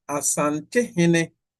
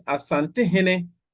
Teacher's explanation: So you see that in between, at the word boundary, at the word boundary of Asante and Ohene, we see a high, low, high sequences. The last tone of the first word, Asante, is high. And then the second word begins with the low tone, O. And then Hene.